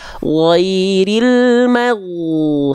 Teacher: Ghain nggak punya sifat hams. Ghain itu jahar. Maka ketika dilafalkan ghairil maghdu, suaranya doang yang ada, jangan jangan ada ngorok-ngoroknya Bunda.